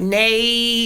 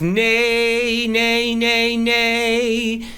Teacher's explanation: it's not a squeezy E, it's an open E.